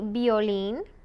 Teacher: the v is more like a b uh it's a soft b